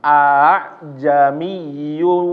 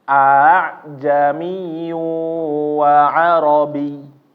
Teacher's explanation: dibacanya Hamzah kedua itu enggak jelas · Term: tashil